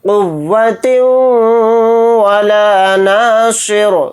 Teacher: تنوین کے بعد واو آ رہا ہے تو اس میں ادغام کا قاعدہ ہو رہا ہے ، یعنی واو پر تھوڑی دیر آواز کو روک کر ادغام · صاد کو موٹا یعنی پر پڑھیں گے اور را کو ساکن بنا کر پڑھیں گے حالت وقف میں